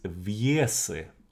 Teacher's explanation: So the first one is Viese, and notice the stress. So the stress is actually on the first syllable